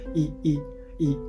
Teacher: イっていうのはこう唇を横に引く母音っていうわけではなくて、こう唇をすぼめない母音なわけです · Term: 非延伸母音